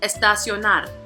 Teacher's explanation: This one has four syllables. So the prosodic accent is going to be on the fourth, which is going to be the last one.